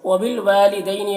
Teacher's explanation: واو میں الف مدہ ہے، ایک الف کے برابر کھینچیں گے